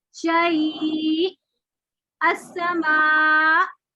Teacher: आपने आवाज का वॉल्यूम बढ़ा के फिर झटके से रोक दी आवाज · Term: नबर